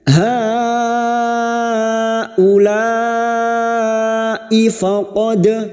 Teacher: Seringkali huruf hamzah ini terseret ya. Huruf hamzah memiliki sifat siddah, tertahannya suara. Maka pada saat dibaca bunyinya haulai faqad, ifaqad harus jelas, jangan sampai terseret ya, jangan dibaca haulai faqad ifa ya, itu terseret namanya.